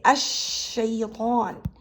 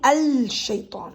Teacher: And the al here, the al, has a special pronunciation rule that for certain letters, lam here is not pronounced as lam. It actually will be elided or swallowed by the following consonant.